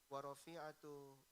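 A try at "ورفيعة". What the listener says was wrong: kalau rafi itu ada ya-nya, rafi'ah. Bisa dibaca rif'ah atau raf'ah.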